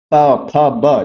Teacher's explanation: आपके जो दोनों होंठ हैं ऊपर और नीचे वाले, वे एक दूसरे को स्पर्श कर रहे हैं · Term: ओष्ठ